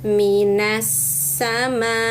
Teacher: setelah memanjangkan mimnya empat harakat, di ujungnya ada bunyi tertahan untuk menampakkan hamzah sukun.